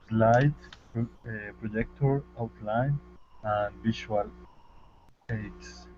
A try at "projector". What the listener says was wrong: Projector. It's almost got an ER sound at the end instead of an OR sound.